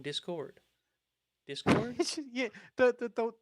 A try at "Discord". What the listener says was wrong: you don't emphasize the proper syllable